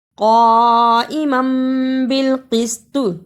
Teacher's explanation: قاف پر زبر اور بڑی مد ہے، اسے لمبا کرنا